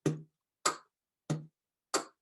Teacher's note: kind of do the ka sound, but it's back in your throat more